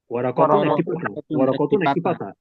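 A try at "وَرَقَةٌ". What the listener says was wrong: ওরাকতুন একটি পাতা। কতে টান দেয় কে, ওরা কতে টান দেয় কে, টান দিবেন না, টান যখন দিব তখন দিবেন, এর বাইরে টান দেওয়া যাবে না। ওরাকতুন একটি পাতা।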